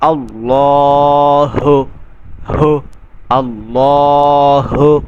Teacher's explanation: পেশ হু বড় হা এ এজন্য বলতে হবে হু বড় হা এটা আকসে হলক থেকে উচ্চারণ হবে অর্থাৎ কন্ঠনালীর শেষ পর্যন্ত থেকে হাটা উচ্চারণ হবে